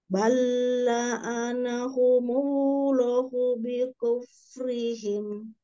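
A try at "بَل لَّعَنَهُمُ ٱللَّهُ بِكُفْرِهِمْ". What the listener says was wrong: Afwan, pas di bacaan bacaan Allah, lohnya dipanjangkan dulu. Bal'anahumullahu bikufrihim.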